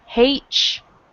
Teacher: a lot of times we pronounce it as if it had a CH